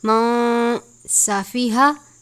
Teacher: سین حروف صفیریہ میں سے ہے یعنی سیٹی کی طرح آواز نکلنی چاہیے